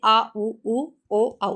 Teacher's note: पश्च स्वर यानी पीछे से आ, उ, उ, ओ, औ है